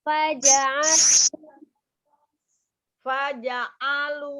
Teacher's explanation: Hanya jangan ngangkat alu, itu jangan diangkat. Karena huruf ain itu sifatnya dia tengah-tengah ya, tidak terlalu ditekan, tidak juga terlalu dilepas.